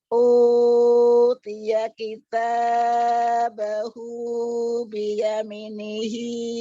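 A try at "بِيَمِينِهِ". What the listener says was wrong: Biyami panjang. Biyaminihi.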